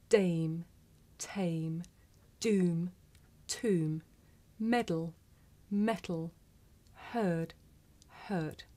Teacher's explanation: In English, we say the sound at the beginning of the word tame with a big puff of air. Look. Dame, tame.